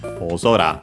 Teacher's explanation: It's accented on the first syllable of the second part of the compound.